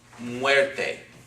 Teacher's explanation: again two syllables this is a diphthong okay it's pronounced together